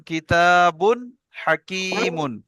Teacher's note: ঠিক আছে তানবিনের পরে হরুফে হালকি ছয়টি অক্ষরের মধ্যে হাসছে তাই তানবিনের আওয়াজকে বিনা গুন্নায় জাহির করে পড়তে হবে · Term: ইজারে হালকি